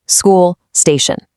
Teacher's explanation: Completely drop that imaginary I at the start. Hit the s right away.